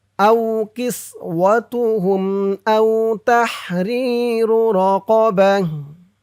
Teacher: হা উচ্চারণ করলাম কেন? কারণ হচ্ছে এই ত চিহ্নতে অক্ফ করেছি, অক্ফ করার সময় গুল তা থাকলে সেই গুল তাটা হা হয়ে যায়।